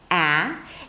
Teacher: The A as in cat is an open front vowel.